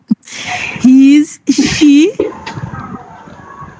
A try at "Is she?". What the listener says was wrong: C'est pas his.